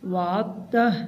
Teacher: مقاما محمودا الذی وعدتہ، یہاں پر دال نہیں پڑھا جائے گا، دال سائلنٹ ہے، عین کو تا کے ساتھ جوڑیں گے۔ وعدتہ، اگر ہم وقف کریں گے تو آخر میں گول ہا نہیں پڑھی جائے گی۔